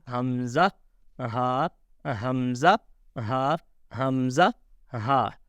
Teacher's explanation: Hamza and Ha, first 2 letters, Hamza and Ha, pronounced from bottom part of the throat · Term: halqiya makharij